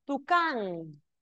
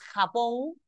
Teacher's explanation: Tucán y Japón tienen el acento en la última sílaba, son agudas